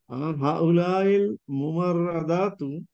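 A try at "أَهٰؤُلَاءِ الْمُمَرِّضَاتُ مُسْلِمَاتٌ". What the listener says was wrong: মুমাররিদাত, এখানে আসলে এই রায়ের উপরে জবর দেয়া আছে, এটা এটা কাসরা হবে শেষে। মুমাররিদাত। আহাউলাইল মুমাররিদাত মুসলিমাত। আহাউলাইল মুমাররিদাত মুসলিমাতুন।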